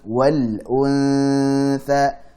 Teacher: nun sukun ketemu tha ikhfa hakiki gunnahnya dibaca tipis karena tha huruf tipis